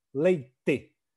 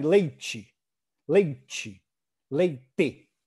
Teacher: Há regiões em que a gente usa o T, por exemplo, o T, dental, T, leite. Né? · há regiões em que a língua encosta um pouquinho no céu da boca na hora de falar